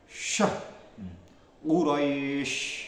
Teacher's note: Terus yang nomor 6 sifat tafasyi. Menyebarnya angin di mulut